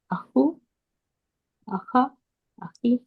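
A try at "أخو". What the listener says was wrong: আপু ওয়াও দিয়ে আসবে, ওয়াও মাদ দিয়ে আসবে। না, ওয়াও আসবে।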